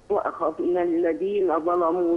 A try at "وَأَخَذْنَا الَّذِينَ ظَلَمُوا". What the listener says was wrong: يا أمي رقق اللام. وأخذنا الذين ظلموا هكذا قوليها تاني كده.